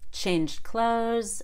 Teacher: I didn't even release the D